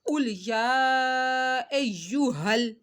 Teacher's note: ہا کو حلق کے نیچے والے حصے سے سختی سے ادا کرنا ہے